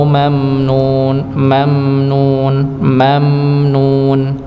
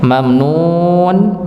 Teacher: tetap mim sukun di situ ada dengungnya walaupun kadarnya se sedikit